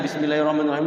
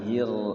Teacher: Bismillahirrahmanirrahim itu rnya tebal ya Jangan tipis